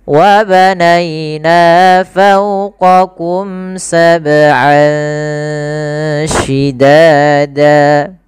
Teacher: Ini ada bacaan ikhfa, yaitu kita samarkan suara an ya ke huruf shin. Jadi terdengar seolah-olah dia ada eng gitu ya, tapi bukan ang, tapi dia ikhfa. Ikhfa itu membaca di antara izhar dan idgham.